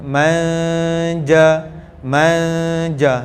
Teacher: dia nak pergi ke makhraj Jim tapi tak sampai Tak boleh sampai sebab kalau sampai tak terkeluar tu bukan ikhfa